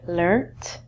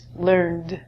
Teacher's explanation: in british english the words in red we end these with a t sound and in american english and i say american english but sometimes canadian english we end them with a d sound